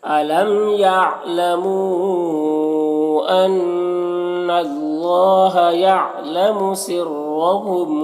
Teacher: یہاں پر نون مشدد غنہ ہوگا، یہاں پر اللہ کے لام کو پر پڑھیں گے۔ کھڑا زبر ہے، ایک الف کے برابر کھینچیں گے۔